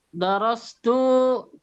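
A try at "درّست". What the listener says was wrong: Darrastu. Kalau mengajar itu darrastu. Pakai syaddah.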